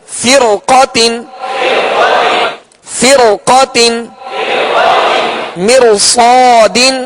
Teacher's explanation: اس کے بعد صاد حروف مستعلیہ میں سے ہے لہذا اس را کو پر پڑھیں گے